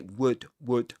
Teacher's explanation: The last thing you'd want, this is the contraction for you would. the verb would in which you don't pronounce the L consonant. You say would would.